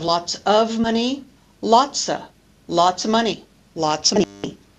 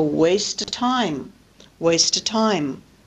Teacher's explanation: disappearing V in the preposition of before a word beginning with a consonant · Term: deletion